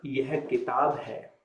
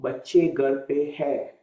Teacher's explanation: So all the examples that we did so far, where you have the noun followed by postposition, if you're making a sentence, and if you're talking about the third person singular, your sentence will end with hai. If you're talking about third person plural, it will be ending with the hai sound, nasalized sound.